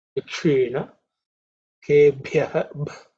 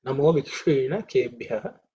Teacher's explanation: in terms of pronunciation, this Ksha, the Ksha is cerebral Ksha